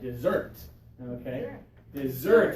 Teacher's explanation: we're going to put a little accent mark out here because we want the second syllable to be extra strong